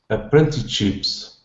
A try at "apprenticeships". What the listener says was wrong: Okay, apprentice. Add that N in there. Apprenticeships.